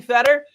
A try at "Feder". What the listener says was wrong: No, it's Fader. It's the long A sound in German. My parents gave up pronouncing the name correctly because everybody would pronounce it as Fetter.